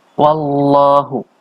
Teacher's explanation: Ini namanya tafkhim atau bacaan lam jalalahnya tebal. Karena sebelumnya adalah fathah.